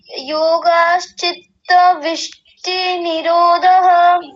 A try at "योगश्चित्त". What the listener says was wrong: देखिए, योगश्चित्त, योगाश नहीं, योगश्चित्त ऐसा बोलिए।